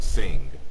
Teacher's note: it's actually a nasalized velar, so it's like an ing, kind of like in the word sing, the ending of the word sing.